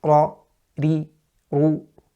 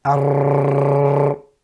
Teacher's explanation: the light vibration or trilling of the tongue due to the tight articulation point with regards to ra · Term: takreer